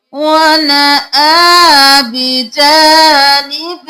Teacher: حمزہ کھڑی زبر آ، ایک الف کے برابر کھینچنا ہے